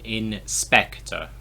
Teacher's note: So we emphasize the second syllable in English. Inspector. If I do it the other way around, it sounds very weird. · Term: stress